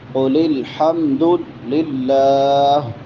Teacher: لفظ اللہ باریک ہوگا یہاں پہ کیونکہ اس سے پہلے زیر ہے، کسرہ ہے